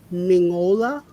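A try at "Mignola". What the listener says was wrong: it's almost there it's fine secret i mean i can't it's like you don't pronounce the g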